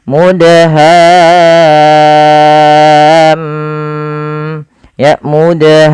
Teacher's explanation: maka suara mimnya kita tahan ya teman-teman kita tahan sepanjang berapa harakat sepanjang dua harakat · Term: gunahnya